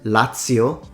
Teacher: Lazio, the Z is pronounced as a ts because it comes from Latin T